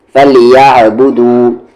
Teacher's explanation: عین کو middle throat میں لے کر چلے جائیں